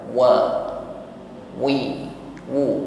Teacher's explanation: diawali dengan huruf waw, makhrajnya syafatan, bibir dihimpun ke depan. Wa, wi, wu, bukan anteng wa, sehingga bunyi huruf waw ini tipis ya.